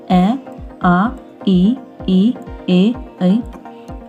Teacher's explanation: Next है होठों की स्थिति के आधार पर दो भाग है। अवृतमुखी, जिन वर्णों के उच्चारण में होठ वृत्तमुखी या गोलाकार नहीं होते